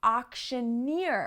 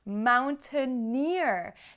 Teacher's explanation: like when we borrow words from other languages like french and words like entrepreneur get the stress at the end of the word because of those french roots